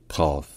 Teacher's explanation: cette lettre se prononce un peu comme un que français, mais un que qui est plus profond dans la gorge. En fait, un que qui a l'emplacement du R français.